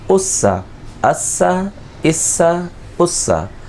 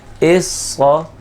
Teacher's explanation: موٹا پڑا جائے گا کیونکہ یہ حروف مستعلیہ میں سے، اور سین اور صاد کے درمیان فرق یہی ہے کہ سین باریک آواز کے ساتھ ہے اور صاد جو ہے یہ موٹی آواز کے ساتھ ہے